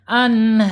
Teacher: Anharu, ro-nya harus tebal. Ini namanya mad arid lis sukun ya, dipanjangkan 6 harokat ya.